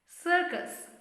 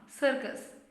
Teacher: Second last letter US, U gets that schwa sound